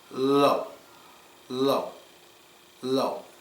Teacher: The word goes down. It gets quieter as you say it.